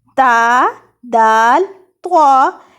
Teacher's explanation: ہمارے یہ جو سامنے نظر آنے والے 2 دانت، اوپر والے نظر آنے والے 2 دانت سامنے والے، ان کی جڑ سے جب زبان کی نوک لگتی ہے تو ادا ہوتا ہے تا